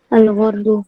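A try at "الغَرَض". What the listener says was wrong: Al-gharadu ya, bacanya gharad. Ra-nya di fathahkan.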